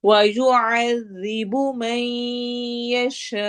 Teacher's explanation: آخر میں حمزہ پہ چھٹکا دیں گے